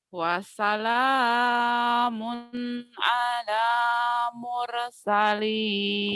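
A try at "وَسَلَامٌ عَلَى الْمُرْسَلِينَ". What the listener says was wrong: Kumaha ieu teh kan ada tasjid ieu teh alal. Wassalamun alal mursal. Wassalamun alal atulahnya jika ketemu sukun jadi pendek teteh. Alal. Ala wae si teteh mah. Jadi pendek kita sorana.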